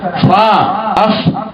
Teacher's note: وللفاء او د فی د پاره باطن الشفت السفلى باطن طرف لاندې شونډې ده